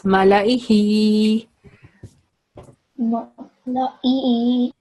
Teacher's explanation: So ma 1 second, la 1 second, e 1 second, and he, because it has vertical kasra, so it will be 2 seconds